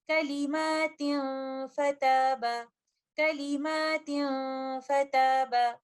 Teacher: फा चूंकि एक लाइट लेटर है, इसीलिए यहाँ पर गुन्ना भी लाइट होगा। कंप्लीट गुन्ना का टाइम देते हुए इन अल्फाज की अदायगी हम इस तरह से करेंगे, کلمات فتاب، کلمات فتاب۔ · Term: इख्फा